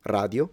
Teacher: radio is just a single tip, r, just like the rest of Italy